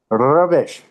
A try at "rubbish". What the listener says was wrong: Keep your tongue. You're curling your tongue too far back. Butter, rubbish, butter.